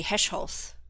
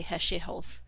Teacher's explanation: we don't put consonants together. We have to split them up with an e sound